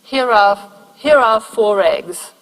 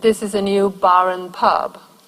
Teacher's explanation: If the next word starts in a vowel, then this R is kind of activated. It becomes a linking R.